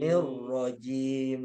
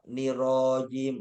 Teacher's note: Roknya pendek, yang panjang ji-nya